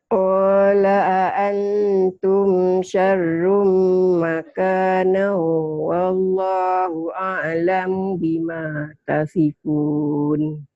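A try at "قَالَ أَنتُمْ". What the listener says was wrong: Kan antum ya, Makcik. A-nya satu.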